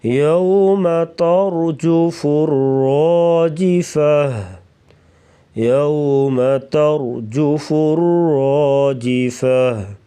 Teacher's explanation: یوم کی واو ہے, واو لین ہے, اس کو نرمی سے ادا کریں گے